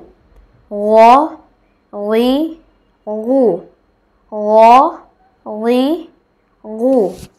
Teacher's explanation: তিন নং মাখরাজ, হলকের শেষ হতে গইন এবং হ